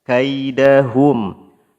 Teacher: perhatikan monyongkan bibirnya sempurna karena hurufnya berharakat dammah